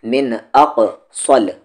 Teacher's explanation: یہاں پر قاف ساکن ہے، قاف پہ جزم ہے، قلقلہ ہوگا، باؤنسنگ ساؤنڈ ، من اقصل، صاد کو ہیوی کرتے ہوئے، من اقصل، آگے